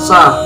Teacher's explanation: Makhrajul huruf sin terletak pada ujung lidah, berada pada halaman dua gigi seri bawah, sehingga suara huruf sin keluar di antara dua gigi seri atas dan bawah. · Dan yang terakhir adalah sofir, yaitu suaranya berdesir. · Yang pertama yaitu hamas, berdesis atau berhembus nafas. Yang kedua adalah rokhwah, yaitu lunak dan suara tidak tertahan.